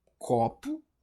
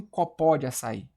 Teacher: a sílaba tônica é a penúltima, por isso é uma paroxítona